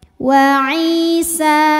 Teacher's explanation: Ai hukumnya mad tabi'i zahiri. Karena ada ya sukun didahului harokat kasrah, maka ain panjang 2 harokat.